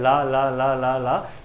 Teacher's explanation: जो आपकी जीभ होगी वो आपको दांत को टच कर रही होगी